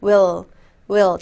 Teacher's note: there will 할 때는요 리을 강하게 하셔야 돼요 혀 끝이 입천장과 위니 뒤에 사이에 닿아야 돼요 will will 닫고